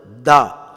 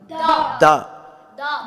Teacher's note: நாவின் நுனிப்பகுதி மேல் நடுப்பற்களின் வேரை அழுத்தமாக தொட்டு விலகும்போது உண்டாகிறது. நாவுடைய நுனிப்பகுதி மேல் நடுப்பற்களின் மேலே உள்ள நடுப்பற்களின் வேரை தொட்டுட்டு விலகும்போது தா.